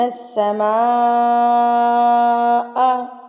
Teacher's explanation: مد متصل یعنی کہ بڑی مد ہے اور اس کو آپ نے 4 حرکات کے برابر کھینچ کے پڑھنا ہے